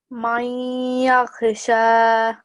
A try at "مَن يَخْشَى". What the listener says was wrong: So this is kha. This is not ghain, okay? So just be really careful. Man yakhsha.